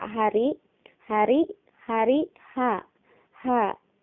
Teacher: Baik, huruf kedua dari aqsal halqi adalah huruf H. Sifat huruf H adalah hamas. Maksudnya hamas ini tadi mengalirkan nafas. Rakhwah, istifal, infitah, dan ismat.